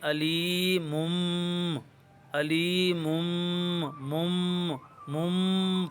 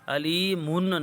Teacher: اس نون ساکن یا تنوین کو چھوٹی سی میم سے بدل کر غنہ زمانی کر کے پڑھتے ہیں، غنہ زمانی مخففہ۔ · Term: اقلاب